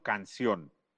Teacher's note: canción es una palabra que ya no es grave porque tiene su acento en la última sílaba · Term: sílaba tónica